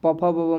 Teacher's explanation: प का उच्चारण स्थान ओष्ठ हो जाता है